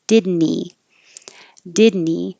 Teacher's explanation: And now another H deletion. This H and he can disappear. And now you're connecting the N to the E.